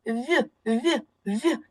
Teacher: перший звук вимовляється з м'якістю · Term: М'який приголосний